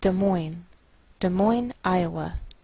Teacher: we treat the name of this capital like one word, and the greater stress is on the second part, so we say Des Moines, Iowa.